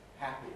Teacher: we start off for the first consonant the h with the vocal folds wide open because h of course is voiceless then the voicing starts for the vowel all vowels are voiced